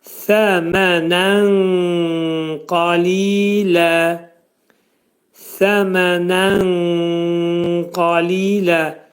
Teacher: Nun səsi qafa yetişəcək. Nunun üçdə biri qafın məxrəcində gizlədiləcək. Qaf hərfinin məxrəci dilin sonu və dilçəyin əvvəlindədir. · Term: ixva